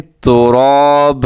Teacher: وقف کریں گے تو یہاں پہ ہم دو زبر کو الف مدہ کی طرح پڑھیں گے